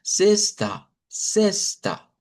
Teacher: en el portugués la X no suena como en el español, sino que simplemente suena la parte como de la S